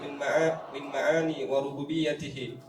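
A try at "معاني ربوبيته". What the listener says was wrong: ma'ani rububiyyatihi. Jangan tambah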